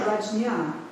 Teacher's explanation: like an NY. yeah, but the J part always turns into kind of a yeah